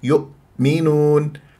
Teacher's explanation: لا تضم الشفاه في الهمزه همزه ساكنه اذا يؤمنون هكذا خلصت نفسي من انه اقلق لها ماذا اقول